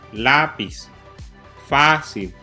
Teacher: esas palabras llevan su sílaba tónica en la penúltima sílaba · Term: palabras graves o llanas